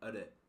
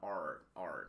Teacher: las R's en inglés son hacia atrás, son retroflex, no son pronunciadas como en español